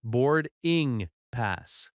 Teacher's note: The stress is on board and pass.